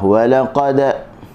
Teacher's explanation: Walaqad, dan huruf dal sukun. Okey, kena bunyi qalqalah.